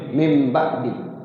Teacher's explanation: jadi nunnya itu berubah jadi mim